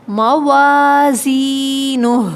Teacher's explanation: موازینہ، الف مدہ ہے، یا مدہ ہے، آخر میں ہا کو ساکن کریں گے تو آواز کو لمبا چلائیں گے